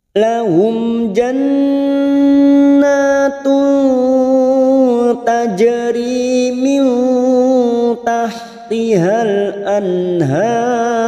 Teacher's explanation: Karena di sini sekarang kita wasal atau terus, maka huruf ta ini pada saat dibaca wasal atau terus kita masuk pada huruf ta. Ikhfa hakiki, samar yang sungguh-sungguh. Kita samarkan bunyi tanwin, duma tanwin masuk pada huruf ta. Kita samarkan 3 harokat.